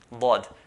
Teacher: The makhraj point for dad is the side of the tongue, one of the sides of the tongue, either right side or the left side of the tongue, or you can use both sides at the same time.